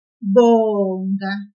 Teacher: we will pull the syllable bo a little bit